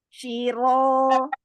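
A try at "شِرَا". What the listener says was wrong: Syira. Bagian pangkal lidah kurang naik ya. Kemudian bagian belakangnya di belakang pangkal lidah itu luas-luasin. Jadi dia jaraknya itu jauh tinggi. Ro, ini kan naik yang di belakang. Ini kasih ruang.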